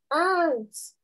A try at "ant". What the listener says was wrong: With S, okay. One more time. Ant. Ant. Ant. Ant.